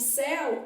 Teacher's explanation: né os sons vocálicos na verdade ficam dentro da mesma sílaba eu tenho uma vogal e uma semivogal na mesma sílaba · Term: ditongo aberto